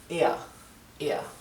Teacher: puede pronunciar la erre apenas perceptible o sino simplemente no la pronuncia que suena casi igual de bien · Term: r apenas perceptible